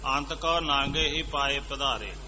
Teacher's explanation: ਹੁਣ ਇੱਥੇ ਨਾਗੇ ਦੇ ਉੱਤੇ ਬਿੰਦੀ ਲੱਗੀ ਨਹੀਂ ਹੋਈ ਪਰ ਬੋਲਦੀ ਹੈ। ਅੰਤ ਕਉ ਨਾਂਗੇ ਹੀ ਪਾਏ ਪਧਾਰੇ।